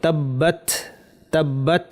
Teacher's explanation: তায়ের একটা বৈশিষ্ট্য হচ্ছে একটু বাতাস বের হবে। তাব্বাত তাব্বাত, এই যে বাতাসের আওয়াজটা শুনলেন, একটু বাতাস আমরা বের করব।